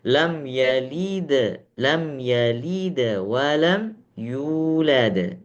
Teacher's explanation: Bacaan dal bukan sama sekali tidak ada qalqalah, bukan, ya. Tapi qalqalahnya itu ringan dan qalqalahnya kecil, tapi bukan suaranya yang kecil, tapi lebih ke pantulannya yang kecil